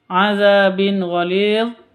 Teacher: tanwin bertemu dengan ghain. Bacanya jelas karena izhar halqi, bukan izhar safawi, tapi izhar halqi.